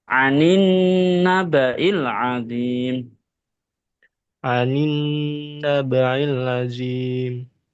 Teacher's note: Aninilim dengungnya kurang karena nun ketika ada tasdid itu dengung